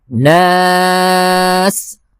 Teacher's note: آخری جو لفظ ہے وہ ہے ناس، نون کو کھینچنا ہے کیونکہ نون کے ساتھ الف ہے، اور دوسرا یہ کہ ہم اس لفظ کے اوپر وقف کر رہے ہیں تو اس کو 3 سے 4 حرکت کی مقدار کھینچ سکتے ہیں۔